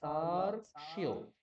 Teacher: চারটে ব্যঞ্জন বর্ণের সংযোগ আছে এখানে, চারটেই শোনা যাবে।